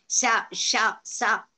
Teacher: When we are uttering, the wind comes out. So they are called as ushma.